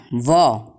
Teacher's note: वकार व का उच्चारण स्थान दांत और होठ होते हैं।